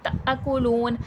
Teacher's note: حمزہ پر جزم ہے، تھوڑا سا جھٹکا آئے گا. کلون، لام واو پیش لو، واو مدہ ہے، کھینچ کے پڑھا جائے گا.